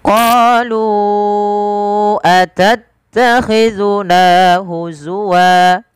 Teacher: Apabila ada fathatain bertemu alif di akhir waqaf dan bacaan kita, dirubah menjadi panjang menjadi wa. Huzwan berubah menjadi huzwa. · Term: mad iwad